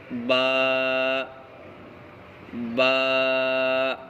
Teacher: دونوں ہونٹوں کے جو گیلا حصہ ہے اس کو ملانے سے با ادا ہوتا ہے